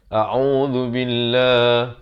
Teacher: Yang pertamanya a, yang keduanya au. A'u, zu di hujung lidah. A'udzu billah, dan lafz jalalah dibaca nipis dua harakat.